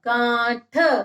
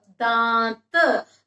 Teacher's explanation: जब हमने अनुनासिक को बोला, अनुनासिक का उच्चारण करते हैं तो मुंह थोड़ा सा ज्यादा खुलता है। तो आवाज मुंह से भी आती है और नाक से भी, दोनों से आती है।